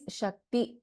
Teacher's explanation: there is no Tha, it is Ta and there is no Mahaprana Tha there